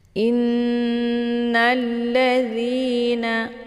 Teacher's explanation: ada tasydid di nun, yaitu gunnah musyaddadah. Cara bacanya didengungkan, ditahan bunyiannya